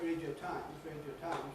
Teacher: when I say ‘Radio [ˈreɪdjəʊ] Times’, I’ve only got two syllables. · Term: compression